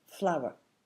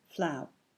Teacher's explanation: how many syllables are in this word again it's two and which one's the strong syllable the first one